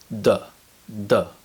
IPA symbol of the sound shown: d